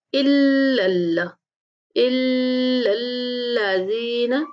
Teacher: حمزہ کو لام کے ساتھ ملاتے ہوئے لام کو بھی سختی سے پڑھنا ہے اور اس کے بعد لام کو پھر دوسرے لام کے ساتھ ملاتے ہوئے دوسرا لام بھی سختی سے پڑھیں گے۔